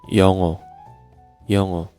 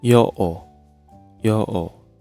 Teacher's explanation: when 이응 as final consonant, 받침, we pronounce NG sound